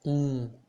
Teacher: we do not pronounce the m in the end of the word we don't close our lip we don't put all ellipse together we do not say um